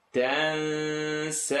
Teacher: So noon sukoon followed by a letter that's not in the throat, and it's the letter Sin, tongue not touch.